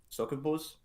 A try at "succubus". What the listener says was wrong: Succubus. You used 3 vowels. There's only one type of vowel in that word.